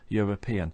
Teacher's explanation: it doesn't begin with a vowel sound it begins European and the Y is a a consonant sound